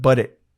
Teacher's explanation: And again, the glottal T at the end of it.